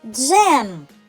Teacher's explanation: В слові всього один голосний звук, тож він і є наголошеним. Над ним треба поставити наголос. · Цей звук голосний, тому малюємо кружечок в другій клітинці схеми. Далі я чую звук М. Це приголосний звук. Вимовляється твердо.